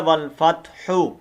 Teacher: والفتح، اور فا کو تا کے اوپر مارنا ہے، اور آخر میں ہا کی آواز کو واضح کرنا ہے